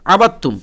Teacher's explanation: আইন জবর আ বা তা জবর বাদ তা মিম পেস্তুম আবাত্তুম ডাইরেক্ট তা এর সঙ্গে বায়ের ইদগাম ঘটাবেন দাল টাকে ছেড়ে দেবেন